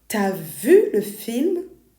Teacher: The phrase for you have, for example, tu as contracts to ta.